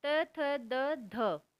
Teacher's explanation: फिर है दंत्य, दांतों के मूल से, त थ द ध, ये हमारे दंत्य हैं।